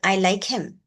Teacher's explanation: So you will have to stress on like and not him.